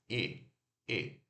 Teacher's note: relaxei os lábios e ele é curto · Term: I curto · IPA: /ɪ/